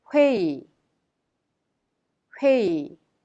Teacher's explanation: The last syllable 의 is pronounced e because it is easier to be pronounced e instead of 의.